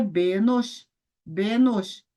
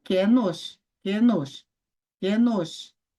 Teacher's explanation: se começar aí com o shivá composto de segol, que é um é brevíssimo